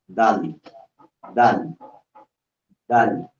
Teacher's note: Yung dila mo nakadikit doon sa taas, sa may puno ng ngipin mo sa taas at hinila mo baba